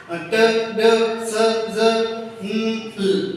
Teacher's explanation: ठीक है, फिर उसके बाद अल्वियोलर साउंड, ऐसी साउंड जिसमें हमारी tip of the tongue alveolar ridge के साथ जाके टच होती है और साउंड प्रोड्यूस होती है